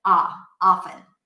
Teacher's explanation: In American English, the ah sound is going to be a bit more open. Not oh, but ah, often.